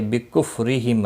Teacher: را زیر کی وجہ سے باریک ہوگا · میم ساکن کے بعد فا آیا ہے، اظہار شفوی ہوگا ، قاف مستعلیہ ہے پر پڑھا جائے گا، لی یا مدہ